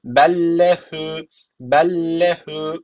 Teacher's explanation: tek bir harf gibi okuyacaksın ve şeddeli gibi okuyacaksın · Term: idğam misl